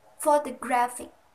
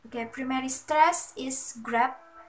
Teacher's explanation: Primary stress is on the third syllable, and the secondary stress is on the first syllable, po. Okay, primary stress is grab, and secondary stress is on the first syllable, po, fo, fo.